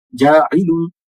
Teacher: تو جاعل میں عین جو ہے ہم حلق کے درمیان والے حصے سے پڑھیں گے